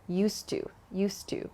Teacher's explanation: to used to there's just one sound there used to so think of it as dropping the D · native speakers connect the D and the T sound at the end of used and to